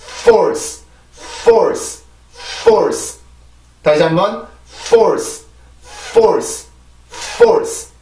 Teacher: F 발음은 마찰음이에요, 마찰음. 마찰음들이 이렇게 강세 음절의 시작에 있을 때는 공기가 나온단 말이에요, 공기가 나와야 되는데, 내가 윗입발로 그냥 아랫입술을 물어주게 되면 이거는 공기가 나올 수 없어요.